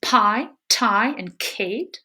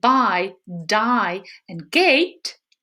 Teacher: Fortis plosives p, t, k in stress-soluble initial position are aspirated, and their lenis counterparts are not. So p, t, k in pi, tie, and kate are aspirated, whereas b, d, g in bi, die, and gate are not.